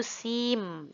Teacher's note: ketika Nun bertemu dengan huruf mim maka harus idghomkan Nun nya dileburkan pada huruf yang berikutnya itu huruf mim